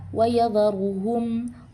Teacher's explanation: Selanjutnya pada kata wayadharuhum, ru-nya berharokat dhammah, maka dia dibaca tafkhim atau tebal